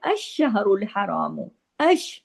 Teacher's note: شین اور الف آپس میں اش سختی سے جڑیں گے۔ الشہر تشدید ہے نا شین پہ، اس لیے پیچھے والے حرف کے ساتھ جو مل کے پڑھا جائے گا۔